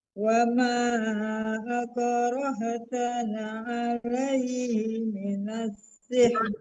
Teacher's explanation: Masih ditekan ke lam. Lamnya tidak ada, Bu. Nggak dibaca ya, langsung ke sin.